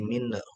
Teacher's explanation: biasakan nun kalau sukun itu jangan dipantulin ya, masih minhu ya, nggak boleh, dia bukan qalqalah